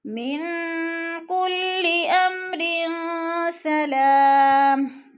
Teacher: 2 زیر تنوین کے بعد سین حروف اخفا میں سے ہے، تو اخفا کریں گے ناک میں آواز چھپا کر پڑھیں گے۔ · والروح فیہا بإذن ربہم، بإذن ربہم من کل، من پہ اخفا ہو رہا ہے، نون ساکن کے بعد کاف حروف اخفا میں سے ہے، اخفا کریں گے ناک میں آواز لے جائیں گے۔